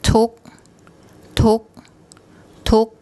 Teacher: low class initial consonant dead syllable a short vowel gives a higher tone · we have the gor gai final consonant, which makes an unreleased K sound.